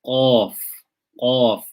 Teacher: Back of the tongue is raised. It touches the hanak. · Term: isti'la